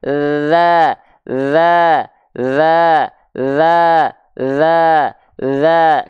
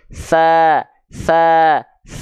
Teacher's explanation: kalau dalal dia sifatnya adalah jahr enggak mengalirkan nafas kalau ta dia sifatnya adalah hams dia mengalirkan nafas